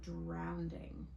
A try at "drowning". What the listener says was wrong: There's no D. Drowning.